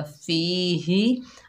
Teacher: हा के नीचे ज़ेर है, बगैर खींचे पढ़ेंगे ही। हा जो है सीने से अदा होगा